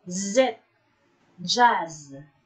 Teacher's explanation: the air is forced through tongue and alveolar ridge.